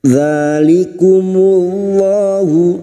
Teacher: lam jalalah yang didahului dhammah kita baca tafkim